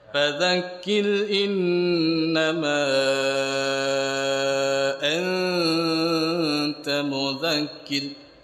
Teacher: Ya, di pangkal tenggorokan huruf hamzah.